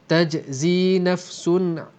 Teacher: di sini ada tanwin berjumpa dengan ain, izhar halqi, tak dengung jelas